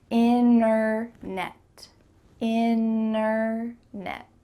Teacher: You can say internet with a clear T if you're speaking a little bit slower, but when native speakers are speaking quickly, we're going to cut out that T completely